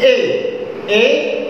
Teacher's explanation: ए ए अपेक्षाकृत अधिक खुल गया, इनकी तुलना में अपेक्षाकृत अधिक खुल गया। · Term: अर्ध संवृत्त स्वर